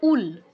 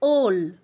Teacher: উল বললে এটা গ্রহণযোগ্য হবে না সংস্কৃতে ওল বলতে হবে